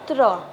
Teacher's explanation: इसमें त की भी ध्वनि आ रही है और र की भी ध्वनि आ रही है, मिलके बन रहे हैं त्र। ठीक है, तो इसमें आधा त है।